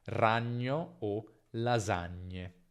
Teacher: È un suono palatale, quindi il dorso, che sarebbe la parte centrale della lingua, tocca il palato duro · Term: nasale palatale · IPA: /ɲ/